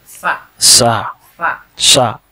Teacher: Sa itu makhrajnya ujung lidah bertemu dengan ujung gigi atas.